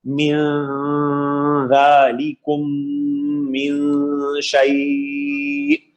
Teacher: ذال نہ تو حروف حلقی ہے، نہ یرملون میں ہے، نہ با ہے، تو یہ بھی اخفا کا قاعدہ ہے. اب یہاں پہ نون کا کیسے اخفا کریں گے کہ ذال کے مخرج کے لیے تیار کریں · ذالکم میں الف مدہ ہے، اس کے بعد میم ساکن کے بعد میم ہے، ادغام شفی، غنہ ہوگا